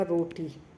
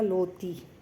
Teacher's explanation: जैसे बच्चे जो है अक्सर गलती करते हैं र बोलने में, र को वो ल बोलते हैं।